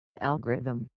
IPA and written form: ˈælɡərɪðəm (algorithm)